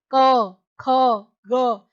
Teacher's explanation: ये कंठ का स्पर्श करते हैं, यानी जब हमारे गले से आवाज आती है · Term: क वर्ग